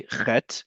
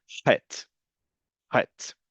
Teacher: In Hebrew, in modern Hebrew, there's actually two standardized ways to say the letter chet. You can either say chet, similar to the letter chaf, it's actually the exact same sound, or a raspier sound that's chet, chet.